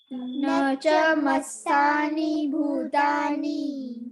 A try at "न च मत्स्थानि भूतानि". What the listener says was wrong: मत्स्थानि नहीं, मत्स्थानि। त की बहुत छोटी साउंड आनी चाहिए। ओके, न च मत्स्थानि भूतानि।